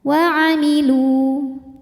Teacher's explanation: Sebab ada waw sukun yang sebelumnya berharokat dhammah, maka huruf lam ini dipanjangkan dua harokat saja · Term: mad tabi'i